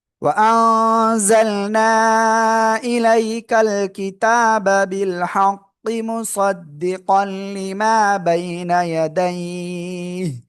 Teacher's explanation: থেমে যাচ্ছে এজন্য হা সাকিন হচ্ছে, এবং তার আগে লিনের হরফ হওয়ায় আমরা এখানে তিন আলিফ টেনে পড়বো